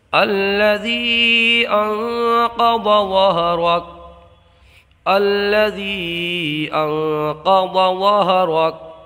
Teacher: یہاں نون میں اخفا ہوگا، غنہ کر کے پڑھیں گے۔ قاف کو پر پڑھیں گے، ضاد کو پر پڑھیں گے، اس لیے قاف اور ضاد دونوں مستعلیہ میں سے ہیں۔ را کو پر پڑھیں گے، کاف کو ساکن کر دیں گے حالت وقت میں جب یہاں پر وقف کریں گے۔ · اور یہاں چونکہ حروف مدہ کے بعد حمزہ دوسرے کلمے میں ہے تو یہاں مد منفصل ہوگا، 2 الف کھینچ کر کے پڑھیں گے۔ یہاں نون میں اخفا ہوگا، غنہ کر کے پڑھیں گے۔ قاف کو پر پڑھیں گے، ضاد کو پر پڑھیں گے، اس لیے قاف اور ضاد دونوں مستعلیہ میں سے ہیں۔